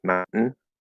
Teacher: we're going from the glottal stop T straight into the N without saying the vowel in between